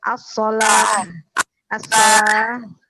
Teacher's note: Ini jadi tak bulat ini, tak bulat kalau mati dia menjadi H ya.